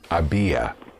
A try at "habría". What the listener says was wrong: The R is important. Habría, because without the R, había would be I had.